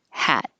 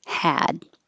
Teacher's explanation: with the final sound being voiceless you turn off your voicing you know that you're going to have a voiceless sound and · is voiced so the ah will be a little longer had before the voiceless sound hat is voiceless the vowel will be a little shorter · the vowel before a voiced sound, d, is voiced, so the a will be a little longer